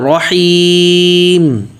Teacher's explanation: را بھی موٹا پڑھنا ہے اور آگے ہا بھی نکالنا ہے